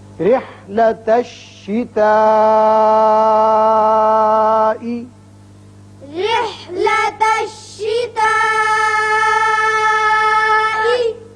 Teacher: مد متصل بڑا مد ہے، لازمی 5 حرکات کے برابر آپ اس کو اوپر کی طرف کھینچیں گے